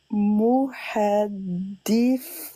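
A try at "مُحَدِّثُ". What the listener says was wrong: Attention, sous, faut bien sortir la langue. on a entendu S là. Faut que tu arrives à dire muhaddithu, sous. Moi j'entends sous. Il faut que tu sors, faut pas que tu t'enlèves ta langue trop vite. Elle est pas bonne la prononciation.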